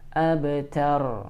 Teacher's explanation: kalau huruf ba sukun maka harus dipantulkan. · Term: qalqalah